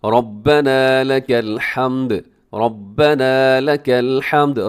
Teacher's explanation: रब्बना में रॉ मोटा है, आखिर में थोड़ा लंबा कीजिएगा क्योंकि अलिफ है इसके साथ